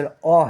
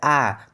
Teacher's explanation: जैसे अ है और उसके बाद उसको बोलिएगा आ तो उसमें दुगना समय लगेगा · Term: दीर्घ स्वर